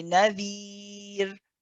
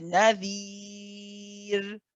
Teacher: If we stop on this word, then it becomes mad arid li sukun. And in that case, it can be 2 counts, 4 counts, or 6 counts.